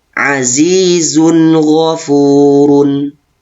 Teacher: Tanwin pada huruf zai bertemu dengan ghain, maka dibaca dengan jelas. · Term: idhar halqi